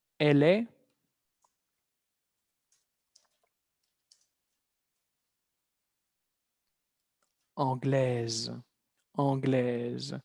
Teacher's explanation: con una S vamos a escuchar la Z